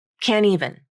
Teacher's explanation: syllable and the end consonant is part of the stressed syllable since the t is unstressed and between the n and a vowel it can be dropped from the pronunciation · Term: nasal flap